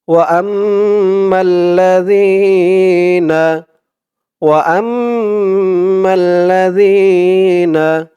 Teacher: ওয়াজিব গুন্নাহ, এক আলিফ পরিমাণ গুন্নাহ করে পড়তে হবে।